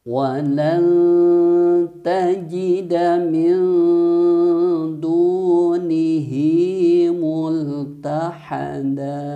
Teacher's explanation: Walan tajida min, di sini juga sama, nun mati menghadapi dal, hukum bacaan ikhfa hakiki, dibaca samar dan mendengung selama 3 harokat. Dan jangan lupa ketika ada nun mati menghadapi huruf ikhfa, maka suara n-nya atau makhraj nun-nya itu diletakkan di huruf dal atau mendekati huruf dal, ya.